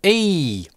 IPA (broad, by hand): ɪj